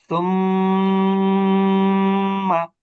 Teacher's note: মিমকে ধরলো যখন তখন কিছু সময় আমরা দেরি করলাম আর জবরের উচ্চারণের সময় আমরা দ্রুত উচ্চারণ করলাম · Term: গুন্না